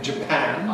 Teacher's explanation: /ə, æ/ in <Japan> [ʤəˈpæn] where [pæn] is stressed.